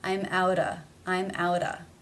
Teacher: to the next word which begins with a vowel sound therefore the sound comes between two vowel sounds it is then going to be pronounced as the flap